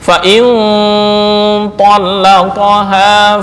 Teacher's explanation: Tapi karena bertemu dengan th menjadi ikhfa. Berpindah dari ujung lidah masuk ke khaisyum.